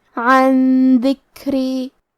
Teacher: دال حروف الاخفاء میں سے ہے اور اخفاء کا معنی ہے چھپا دینا، تو ہم نون ساکن کو چھپاتے ہوئے اور غنہ کے ساتھ یہ حکمے کو ادا کریں گے · عن ذکری، کلمت ذکری میں کاف ساکن ہے تو ہمیں کاف کو ہمزے سے پڑھنا ہے، را کو پتلی آواز میں پڑھیں گے کیونکہ اس کے نیچے زیر ہے